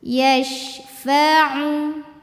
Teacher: Kemudian ain dari tenggorokan bagian tengah